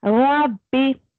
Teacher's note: ربی موٹا پڑھنا ہے یعنی آپ کو منہ بھر کے پڑھنا ہے ربی اور اس میں ہلکی سی تکرار آئے گی ہلکا سا